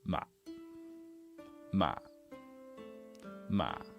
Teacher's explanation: really low really short and kind of croaky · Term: zombie tone